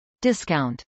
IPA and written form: dɪskˈaʊnt (discount)